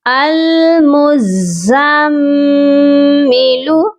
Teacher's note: کیونکہ میم مشدد پر ہمیشہ غنہ کیا جاتا ہے